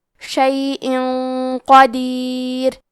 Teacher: کلمت قدیر میں حرف القاف کی ادائیگی زبان کے جڑ اور تالو کے نرم حصے سے ہے، قاف حروف التفخیم میں سے ہے تو ہم یہ حرف کو موٹی آواز میں پڑھیں گے